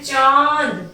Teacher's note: चंद्र बिंदु तो आप जानते ही हैं जिनका उच्चारण मुख और नाक से होता है। जब हम बोलते हैं चांद तो हम नाक का और मुंह का दोनों का यूज कर रहे हैं।